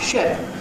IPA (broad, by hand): ʃ.e.p